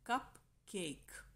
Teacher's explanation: The third is spondy. There is equal stress on both syllables as in the word cupcake